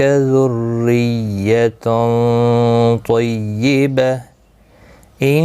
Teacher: تو یہاں پر ملانے کی صورت میں اظہار حلقی ہوگا. تنوین کے بعد آگے حلقی حمزہ آیا ہے، اس لیے یہاں پر اظہار حلقی ہوگا، تنوین کو ظاہر کر کے پڑھیں گے